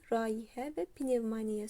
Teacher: vurğusu üçüncü hecada olan rayihə və pnevmaniya sözləridir